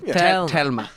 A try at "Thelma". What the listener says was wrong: There's an H in there. It's not Telma.